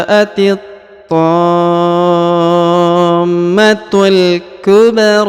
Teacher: Huruf ba dipantulkan ya, karena dia huruf memiliki harokat sukun ya, dan harus dipantulkan huruf ba karena ini termasuk salah satu huruf pantul apabila berharokat sukun. · Huruf ro-nya dipanjangkan 2 harokat ya · Setelah dipanjangkan 6 harokat lalu ditahan dan ditekan pada huruf mimnya ya